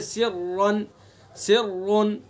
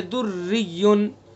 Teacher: را مشدد متحرک پر زبر پیش ہوگا تو را کو پر پڑھیں گے، جیسے سرن سرن، اور زیر ہوگا تو را کو باریک پڑھیں گے، جیسے دریون۔